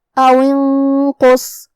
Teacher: قاف حروف الاخفاء میں سے ہے اور اخفاء کا معنی ہے چھپا دینا، تو ہم یہاں نون کو چھپاتے ہوئے اور غنہ کے ساتھ یہ حکم کو ادا کریں گے جو کہ قاف حروف التفخیم میں سے ہے اور غنہ اپنے اگلے والے حرف کا حکم لیتا ہے تفخیم میں اور ترقیق میں، لہذا ہم یہ غنہ کو بھی بھاری آواز میں پڑھیں گے. · کلمت او کے آخر میں واو کے نیچے زیر ہے تو ہم زیر ظاہر کریں گے اور اس کے بعد الف ہے. کلمت انقص میں یہ حمزۃ وصل ہے تو ہم حمزہ کو ظاہر نہیں کریں گے، واو کے بعد حرف النون پڑھیں گے. کلمت انقص میں یہاں نون ساکن ہے، پھر حرف القاف ہے.